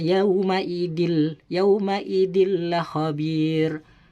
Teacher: Contohnya nih, ketika nun sukun dan tanwin bertemu dengan lam, yauma idil la khabir. Jadi tanwinnya seakan-akan masuk kepada lam dan bertasdid ya, seakan-akan lam itu bertasdid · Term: idgham bila guna